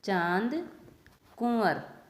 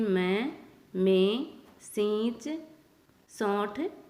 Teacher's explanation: यह स्वर का गुण है। इसका उच्चारण स्वर के साथ नाक और मुंह दोनों से होता है। कि जो अनुनासिक है वो एक स्वर का ही गुण है और इसका उच्चारण नाक और मुंह दोनों से होता है।